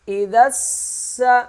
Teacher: حمزہ زیر ای، ذال سین زبر ذس، سین زبر سا۔ ذال کے آگے الف لکھا ہوا یہ نہیں پڑھا جائے گا، ذال سین کے ساتھ سختی سے مل جائے گا۔